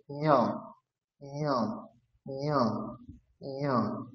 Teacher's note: তাহলে তালু এবং নাকে উচ্চারণ করতে হবে